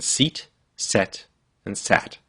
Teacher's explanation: You'll notice that your tongue starts up high, e, then goes to the middle of your mouth, e, and then goes down to a. So your tongue can go up and down.